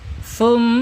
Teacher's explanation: mim ini mempunyai sifat gunnah kita ketika bertasdid ya. Ketika hurufnya bertasdid menjadi gunnah.